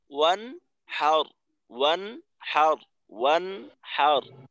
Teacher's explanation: কিন্তু শক্ত করা যাবে না এখানে দেখবেন যে অনেক অনেক সময় অনেকের তেলাওয়াতে শোনা যায় যে ওয়ানহারের জায়গায় ওয়ানাহার ওয়ানা এমন ভাবে বলা হয় যে নুনে রজমের পরিবর্তে আংশিক জবরের উচ্চারণ হয়